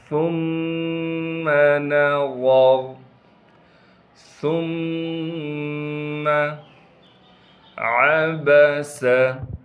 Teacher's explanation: عین کو صاف کر کے گلے سے نکالیں گے، با کو بغیر کھینچے پڑھنا ہے، سین کو بھی بغیر کھینچے پڑھیں گے اور سین میں سیٹی ادا کریں گے۔